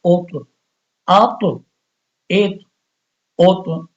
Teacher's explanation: طا کو موٹا بھی پڑھنا ہے اور طا پہ قلقلہ بھی ہے